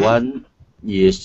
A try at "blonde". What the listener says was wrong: And it would be pronounced blonde. The E at the end is silent. So instead of blondy hair, it's blonde hair.